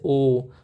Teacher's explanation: ओ बोलोगे तो आपका लिप्स जो है वो गोल हो जाएगा, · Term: कंठोस्त